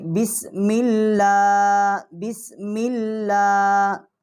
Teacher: اور لام جو ہے اس کے اوپر شد ہے جو اللہ کا لام ہے، اور اس کے اوپر کھڑی زبر بھی ہے، تو اس کو ہم نرم پڑھیں گے، بسم اللہ بسم اللہ۔